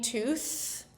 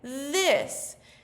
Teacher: Our mouth doesn't change, we just turn our voice on.